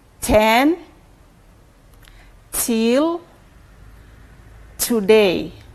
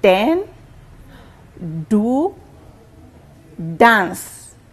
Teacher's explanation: The second sound is d, and we have words like den, do, dance. Where the tip of your tongue touches is the alveolar ridge.